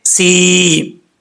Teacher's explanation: یا جو ہے یہ حروف مدہ یا ساکن ہے، تو یا ساکن سے پہلے جب زیر ہو تو یا مدہ ہوتا ہے۔ یہاں پر یا ساکن ہے، اس سے پہلے زیر ہے، تو اس کو مدہ کر کے پڑھا جائے گا، ایک الف کی مقدار لمبا کیا جائے گا۔